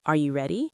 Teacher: Your voice goes up at the end. That change in sound is intonation. · when you ask a question like, Are you ready? your voice goes up at the end.